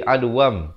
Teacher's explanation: Cara bacanya ialah ditukarkan, itu maksudnya iqlab. Ditukarkan bunyi nun kepada bunyi mim. Asalnya adwan jadi adwam, tapi dipanjangkan 2 harakat.